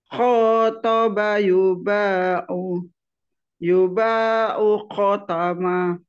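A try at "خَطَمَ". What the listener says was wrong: Khotama. Ma-nya kurang panjang, Bu. Khotama.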